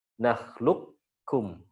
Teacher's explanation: Nakhluqum ini bisa menurut beliau bisa dibaca dengan idgham kamil. Ya, idgham kamil berarti qafnya enggak kebaca sama sekali, langsung ke kaf. Nakhluqum, langsung tipis.